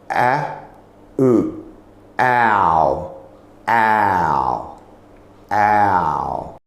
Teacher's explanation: Ow is a combination of two sounds of a and u. The way we make that sound is that you start with the position of the mouth a bit forward. · you start with the position of the mouth a bit forward. And its sound comes from the back of the throat. And you move through to the u. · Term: diphthong sound ow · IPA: /aʊ/